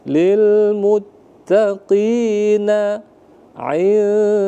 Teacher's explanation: Dia dibaca samar-samar. Samar-samar itu antara bunyi nun dengan huruf dal. Tetapi tetap kita tekan atau tahan selama satu alif atau dua harokat. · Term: ikhfa